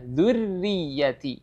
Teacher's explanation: Dan perlu diperhatikan di huruf ra ini ya, huruf ra ketika mengucapkan huruf ra ya, huruf ra itu getarannya jangan terlalu banyak